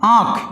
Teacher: यानी कि नाक में ध्वनि जा रही है, नाक में जो प्राणवायु है, सांस है वो जा रही है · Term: चंद्र बिंदु